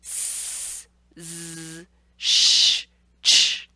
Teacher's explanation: When you roll to that sh and ch sound, your tongue is moving backwards to produce that. So we know that these are not alveolar sounds because I'm moving it further back than where I was placing it for the s and z sounds. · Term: palatal